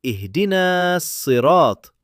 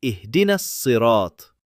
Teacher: We don't say ihdinas sirat with a long stretch, we say ihdinas sirat, moving briskly from the short vowel straight into the shaddah.